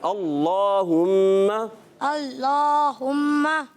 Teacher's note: یہ موٹا پڑھیں گے، ٹھیک ہے؟ اور اس کو جو ہے اندر سے ادا کرتے ہیں، باہر زبان نہیں آنی چاہیے